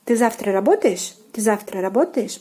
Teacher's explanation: So your intonation has to go up when you are saying this question.